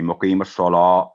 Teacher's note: اور سواد جو ہے وہ تھک لیٹر ہے, موٹی آواز میں پڑھا جانے والا لفظ ہے, تو مقیم الصلا, لا کو گول نہیں کرنا